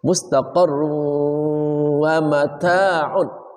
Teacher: Q mustaq tanwin bertemu wau namanya idgham Bi gunna wajib dengung cara membacanya masukkan suara tanwinnya ke dalam huruf wau disertai dengung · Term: idgham bi gunnah